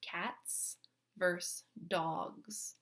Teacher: cats has the prominent s sound while dogs has more of a z sound